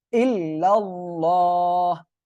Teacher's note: আল্লাহ শব্দের লামের ডাইনে জবর আসছে, মোটা করে পড়তে হবে